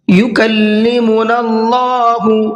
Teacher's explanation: وقال الذین، قاف کو پر کر کے پڑھنا ہے، یکلمنا اللہ، اللہ کے لام کو پر کر کے پڑھنا ہے اس لیے کہ اللہ کے لام سے پہلے زبر ہے۔